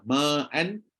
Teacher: harakat mana adaah satu harakat kan Maknya hilangkan harkat tak boleh Mesti kena capai dia dua dua harkat